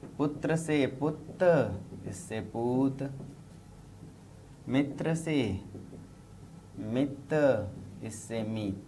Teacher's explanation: दीर्घीकरण, सिर्फ इस पे ध्यान दीजिए, ह्रस्व स्वर दीर्घ में बदल जाए। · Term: क्षतिपूर्ति दीर्घीकरण